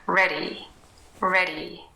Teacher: And when we have a word like ready, and we say it fast, and maybe in North America or in Australia, New Zealand, it will probably sound more like ready, ready. Very quick, a little bit softer even than the D, and a very light little tap against this alveolar ridge.